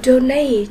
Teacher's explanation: Cô có từ donate, nhấn âm tiết số 2